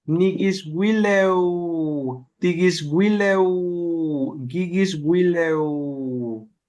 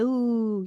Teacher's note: when you get to the W, elongate the sound. So it's like a double O, right?